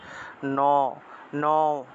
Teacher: দন্ত ন উচ্চারণ করলে অটোমেটিক একটা অ উচ্চারণ চলে আসে